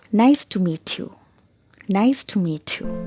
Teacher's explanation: so there's a fall in my pitch at the end of the sentence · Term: falling intonation